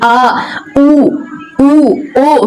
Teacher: बीच बीच में रहती है पश्चिम भाग पीछे वाले भाग में आ उ ओ सारे में आपकी जीभ कहां रह रही है पीछे साइड रह रही है